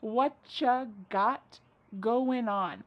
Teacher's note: Whatcha is what plus you. You becomes cha.